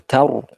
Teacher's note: Ta, desi sedikit ya. Setelahnya roh sukun, karena didahului oleh fathah dari huruf ta, maka roh sukunnya dibaca tebal. Tar, ya bibirnya ngumpul.